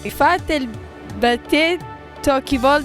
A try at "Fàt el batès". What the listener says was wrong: Perché Batette che c'è una S? S. Certo, perché lo dicono accentata, quindi non si legge l'ultima.